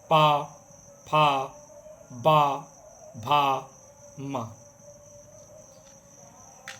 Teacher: उनके उच्चारण में दोनों ओठ आपस में मिलते हैं। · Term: प वर्ग